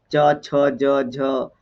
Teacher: पूरा तालु से सटते जाएगा, इसको बोलेंगे स्पर्शी संघर्ष व्यंजन